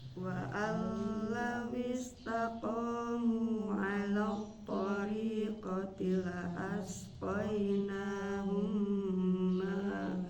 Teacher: Mim sukun bertemu dengan huruf mim jadi idgham mimi itu idgham mutamatsilain.